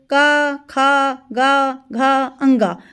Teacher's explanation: ये आपके कंठ से गले से आवाज़ ए रही है